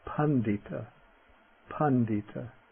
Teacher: The voiced retroflex D. We get this in the middle of a word.